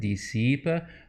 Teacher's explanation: dissipe, with a schwa at the end